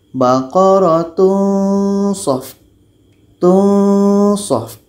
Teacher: Ketika kita sebut tanwin ini, kita sudah merasakan huruf so. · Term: ikhfa hakiki